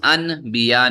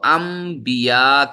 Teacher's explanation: جیسا ہی آپ با نکالنے کے لیے ہونٹ ملائیں گے تو خود بخود ہی میم کی آواز آئے گی، جیسے ہی آپ نون ساکنہ کے بعد ہم دیکھیں کیا ہے، با ہے، ٹھیک ہے، ان بیا نہیں، تو اس کو ام بیا کر کے پڑھیں گے، ام بیا، ٹھیک ہے۔